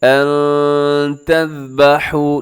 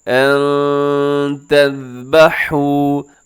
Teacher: نون ساکن ہے، نون ساکن کے بعد تا ہے، اپنے یہاں پر اخفا کرنا ہے